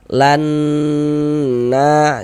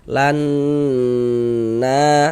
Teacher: di bagian lannya itu suaranya itu kita tahan, kita panjangkan sebentar ya. Lan na seperti itu kita dengungkan, kita gunahkan. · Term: ghunah musyaddadah, gunnah musyaddadah